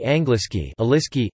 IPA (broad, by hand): ˈaŋɡliski